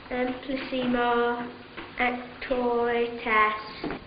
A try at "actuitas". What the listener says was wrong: Not as. Arse. Lord knows you should be able to pronounce that.